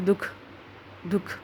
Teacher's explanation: 2 vertical dot होती हैं, इसमें से हल्की सी ह की ध्वनि आती है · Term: विसर्ग